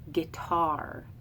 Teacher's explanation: an unaccented and an accented syllable so I say guitar as an iamb